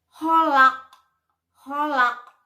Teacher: maka menjadi qalqalah kubro, menjadi mantulnya itu besar, membalnya itu besar, menjadi holak.